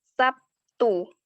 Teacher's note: Misalnya, kata Sabtu biasanya diucapkan Sabtu memakai P, di mana bunyi B berubah menjadi P karena pengaruh bunyi T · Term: Asimilasi